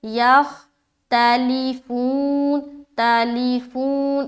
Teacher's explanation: ख्वा मोटे हर्फ में से है, लिहाजा मिलाते हुए मोटा रखेंगे